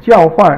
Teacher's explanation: 交 is first tone, and then 换 is fourth tone.